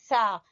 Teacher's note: जबान की नोक और सामने वाले दो दांतों के सिरे से सा